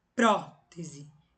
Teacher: E a proparoxítona é a mais fácil. É a antepenúltima sílaba tônica